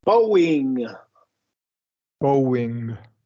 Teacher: when a syllable ends with the long o and the next syllable starts with a vowel we're going to really emphasize that W